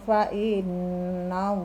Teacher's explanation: nun bertasydid wajib mendengung